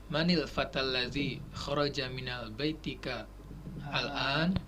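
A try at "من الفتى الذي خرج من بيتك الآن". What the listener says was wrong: Minnya ada alif lamnya enggak? Coba diulangi sekali lagi pelan-pelan.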